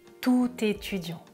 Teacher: étudiant commence par une voyelle donc je fais la liaison